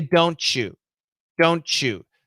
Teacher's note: So that T plus Y equals CH. This is an easy example of blending.